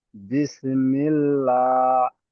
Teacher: তাই খাড়া জবরকে এক আলিফ পরিমাণ টান দিয়ে পড়তে হয়।